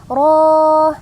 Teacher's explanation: ro panjangnya dua harakat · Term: mad thii